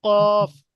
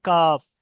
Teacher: জিভের গোড়া হতে একটু আগে, কফটা হচ্ছে না একদম, কফ জিভের একদম গোড়া থেকে, আর কাফ জিভের গোড়া হইতে একটু আগে বাড়িয়ে তার বরাবর উপরের তালুর সাথে লাগিয়ে উচ্চারিত হয় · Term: কফের মাখরাজ